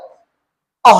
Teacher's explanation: अः बोलते हो तो पीछे से ह की आती है